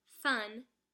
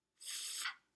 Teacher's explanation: is a labiodental sound because when you pronounce it, you use both the tops of your teeth and your lip to make the sound.